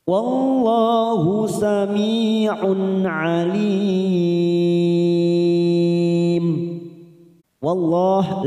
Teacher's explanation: lam jalalah yang didahului fathah kita baca tafkhim